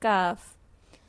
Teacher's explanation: ویسے ہی زبان کی جڑ کے تھوڑا آگے آئیں گے، نرم اور سخت تالو ابھی فیل ہوگا تو ہم اگلا حرف کاف ادا کریں گے. اور کاف مستعلیہ حرف نہیں ہے، اس کو باریک پڑھا جاتا ہے. کاف.